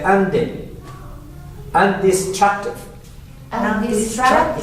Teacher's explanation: Two D's. So the first D is not there. You can simply say undi.